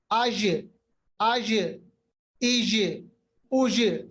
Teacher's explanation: जीम की आवाज पे कलकला, कलकला का मतलब होता है रिबाउंड, ठीक है। ये 5 हरूफ पे होता है, अभी तक मैंने सिर्फ 2 बताया, कॉफ और जीम।